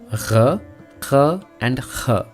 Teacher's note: All these sounds are made from the back of the throat